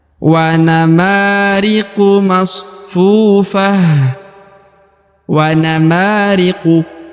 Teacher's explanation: Huruf ma dibaca 2 harokat karena di depannya terdapat alif.